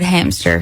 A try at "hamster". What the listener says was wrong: Hamster. Hamster. Hamster.